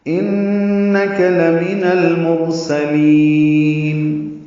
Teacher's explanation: ان میں نون مشدد پہ غنہ ہے، کاف باریک ہے